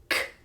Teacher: The sounds I'm going to talk about are called throat scrapers. They're made in the very back of your mouth. So we're moving from our lips to the very back of our mouth where our mouth meets our throat.